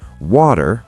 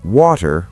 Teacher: American, water with a soft D. British, water with a clear T.